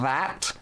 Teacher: those are fricatives meaning uh air is continually moving out of your mouth as you make the sound